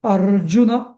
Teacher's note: अर्जुन उवाच नाही म्हणायचं अर्जुन उवाच आता न अ आता अर अर मुळे त्याचा दीर्घ झाला अर जु रस्व आहे